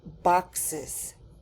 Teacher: the word boxes ends in the letters e s but it sounds like is